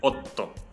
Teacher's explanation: se pronuncia como una T, poquito más alargada